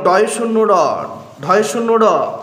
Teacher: উচ্চারণের সময় জিহ্বার সম্মুখ প্রান্ত তালুকে একবার মাত্র টোকা দেওয়ার মতো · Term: তাড়িত ধ্বনি